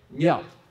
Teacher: the fourth one, which like goes down very steep